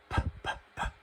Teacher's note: she doesn't use her voice she just goes PP she's just kind of like whispering